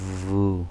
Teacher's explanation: আপনার দুই ঠোঁটের মাঝখানে একটা ভাইব্রেশন সেট করবেন, ভাইব্রেট করবেন, ভাইব্রেট উচ্চারণ, মানে ভাইব্রেট করবেন দুই ঠোঁটের মাঝখানে, কি করবেন, ভাইব্রেট, ভু, ওয়া পেশ উ।